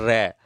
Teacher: र जो है वो कंपन करता है